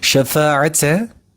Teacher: bir parmağı kaldırıp tekrardan yerine indirince kadar uzatılması gereken bir konudur Bu bir el miktarı uzatılan bir kural meddi tabi